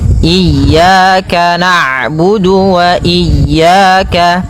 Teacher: ain itu punya sifat namanya bainiyah, yaitu bacaan di antara syiddah dan rokhawah. Kalau syiddah suaranya tertahan, kalau rokhawah suaranya mengalir, maka di antara keduanya.